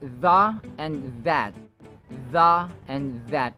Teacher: Notice the sounds or the initial sounds have the voiced TH sound or the hardened TH sound